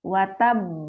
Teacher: Watab naik ya, suaranya naik. Baru dipantul.